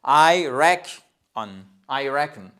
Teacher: Donc, vous avez une première syllabe ici, une seconde syllabe ici, et quand vous avez l'apostrophe ici, ça nous indique que le stress est sur on the first syllable